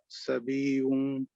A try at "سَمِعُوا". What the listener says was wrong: No, سَمِعُوا. Don't stretch this. Don't stretch the meme, yeah?